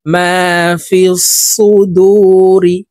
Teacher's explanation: দু তিন আলিফ টেনে রকে সাকিন করতে হবে কারণ মধ্যে আরজি তিন আলিফ টেনিয়া পড়িতে হয়